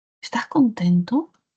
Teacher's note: sienta como su voz dibuja esa curvita melódica hacia arriba. Ese es el único enunciado que tiene tono ascendente.